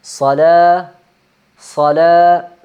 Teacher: تو یہ چونکہ لام کے اوپر زبر ہے اور یہ الف ساکن ہے تو یہ مدہ ہونے کی وجہ سے اس کو لمبا پڑا جائے، صلا نہیں، صلا تھوڑا سا لمبا، 2 الف کی مقدار